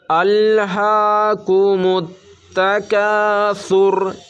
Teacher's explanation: الہاکم التکاثر، کتنے لوگ ایسے ہوتے ہیں ال اس طرح بول دیتے ہیں، یہ لام کی آواز ہلکی سی آواز آنی چاہیے، مگر اس میں قلقلہ کی طرح اس طرح آواز ٹکرانی نہیں چاہیے